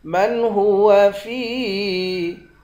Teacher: فا کو یا کے ساتھ ملا کر ایک الف کی مقدار کھینچ کر پڑھیں گے، یا حروف مدہ ہے